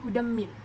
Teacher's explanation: Yang ketiga hudam, yang tu saya gariskan idgham adalah idgham bi gunnah, idgham ataupun ma'al gunnah sebab huruf dal berharakat fathah tanwin bertemu dengan huruf mim, jadi dibaca dengan dengung dan ditahan sampai 3 harakat. Yang seterusnya saya gariskan pada mim rabbihim tu adalah idgham bila gunnah, idgham bila gunnah sebab huruf nun sukun bertemu dengan huruf ra tasydid, dibaca tanpa dengung, ini tanwin tu hilang.